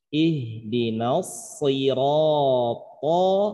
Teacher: Ini tebal sod, ketemu ro tebal, ketemu to tebal. Karena ketebalannya walaupun ro tebal tafkhim tidak lebih tebal dari sod dan to, tapi hitungannya sama-sama tebal ya.